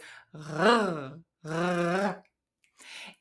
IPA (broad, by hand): ʀ